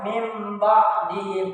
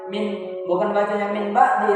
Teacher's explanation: Jadi nun mati ini melebur kepada huruf ba. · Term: iklab